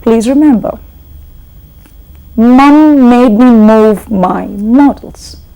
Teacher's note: you feel the air rushing out through the nose